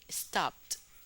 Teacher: Ya en la pronunciación, la diferencia no, no es mayor porque la última consonante es una P, entonces usted no va a pronunciar una P dos veces, sigue igual como si fuera una sola P. Sí, la diferencia está en la escritura.